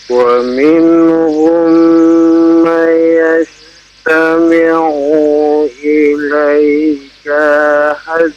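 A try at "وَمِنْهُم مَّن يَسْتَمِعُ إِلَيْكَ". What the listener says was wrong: Membacanya jangan ya terburu-buru ya. Perhatikan tajwidnya ya. Wa minhum, ada mim bertemu dengan mim, maka ditahan 2 harokat. Mai, ada nun bertemu dengan ya, ditahan 2 harokat ya.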